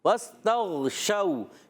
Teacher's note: شو میں شین واو زبر شو، واو لین ہو جائے گا، نرمی سے ادا کریں گے